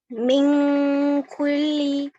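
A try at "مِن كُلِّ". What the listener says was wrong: Kulli. Bukan kulli, tapi kulli. Kulli. Jangan kulli, tapi kulli. Tasdid lebih dihentak. Kalau kulli itu sekedar double. Dan double itu belum tasdid. Tasdid itu dihentak sedikit lagi.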